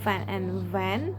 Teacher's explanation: Both are made by the bottom lip touching the upper teeth but VV uses focal cord vibration.